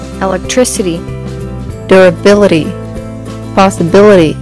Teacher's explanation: voici des mots accentués sur la troisième syllabe